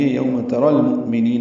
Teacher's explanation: یوم اگلی آیت بھی یوم شروع ہوتی ہے، واولین ہے یوم ترا، را پر پڑھیں گے، تا کو باریک پڑھیں گے اور را کو المؤمنین کے لام سے ملا دیں گے